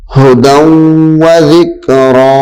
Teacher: اس میں بھی غنہ ہے کیونکہ تنوین کے بعد حروف یر مدود میں سے واو آ رہی ہے